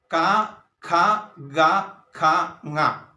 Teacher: ആദ്യമായി പുറത്തേക്ക് വരുന്നത് കണ്ഠത്തിൽ നിന്ന് അഥവാ കഴുത്തിൽ നിന്നാണ് അതുകൊണ്ട് ആ വ്യഞ്ജനത്തെ കണ്ഠം എന്നാണ് നമ്മൾ പറയുന്നത് അപ്പോൾ കണ്ഠം എന്ന് പറയുന്നത് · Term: കണ്ഠ്യം